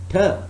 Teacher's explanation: the tip of the tongue is touching the alveolar ridge, ter, and it cuts off the airflow.